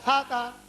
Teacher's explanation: সা আগা থেকে নরম আদায় হবে